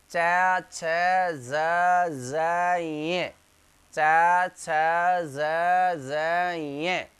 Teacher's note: इन सब का उच्चारण स्थान च वर्ग का किससे होता है बताइए, तालु से